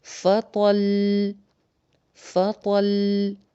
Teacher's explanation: جیسے فطل، فطل یہ تھا ایک، اس میں لام کے اوپر شد بھی ہے اور اس پہ ہم وقف کرنا چاہ رہے ہیں تو اس کو کیسے پڑھیں گے؟ اس کی 2 پیشیں نہیں پڑھیں گے بلکہ فطل، فطل۔ اب فطل کر کے نہیں رک جائیں گے کیونکہ لام 2 دفعہ ہے، تو فطل تھوڑا سا ٹائم لگا دیں گے 2 لیٹرز کے برابر